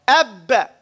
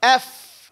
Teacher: One traps the air. The other one lets it flow.